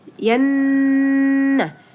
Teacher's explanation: Nah, itu ada nun sukun ya, sama dengan sum tadi, itu nun atau mim bertasydid, itu disebut dengan gunnah. Jadi teman-teman harus dengungkan ya 2 sampai 3 harokat.